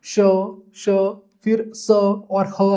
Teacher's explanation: जिन शब्दों को जिन वर्णों को बोलने में हमें ज्यादा संघर्ष करना पड़ता है। जब हम उन शब्दों को उच्चारित करते हैं तो आपको देखने को मिलेगा एक गर्म वायु आपके मुंह से बाहर आएगी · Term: उष्म या संघर्षी व्यंजन